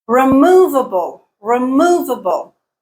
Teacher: stress is on the second syllable, not the first, not the fourth.